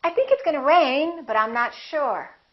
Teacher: with my intonation going up with the pitch going up it sounds like something else is coming like I'm not finished speaking